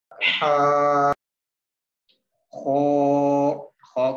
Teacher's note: हा आवाज बिल्कुल क्लियर होनी चाहिए और इसमें थोड़ा सा स्ट्रेस भी होगा। खो क्योंकि सब्सक्रिप्ट में लिखा हुआ है इसको हम मोटा करके पढ़ेंगे।